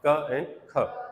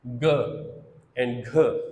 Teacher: क एंड ख दोनों वॉइसलेस है, जबकि उसके मुकाबले में ग एंड घ दीज आर वॉइस्ड